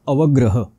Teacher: ग्र इथे जोडाक्षर आहे त्याचा आघात व वर होईल आणि ह पूर्ण आहे म्हणून अवग्रह हे अशा प्रकारचा अवग्रह तुम्हाला